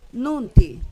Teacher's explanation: Porque la segunda sílaba es abierta. Entonces, yo voy a pronunciar con fuerza en la primera sílaba.